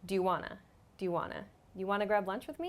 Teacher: Wana is the reduced form the contracted sound of want and to together